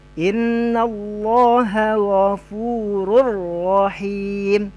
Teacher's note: Tidak ada dengung di situ ya, masuk secara sempurna. Ghafurur, hilang runnya, langsung ke ro. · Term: tidak didengungkan